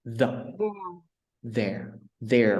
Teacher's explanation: nó không đọc giống như là đê trong Việt Nam, mà giờ chỉ để cái lưỡi ở trên cái hàm răng trên đó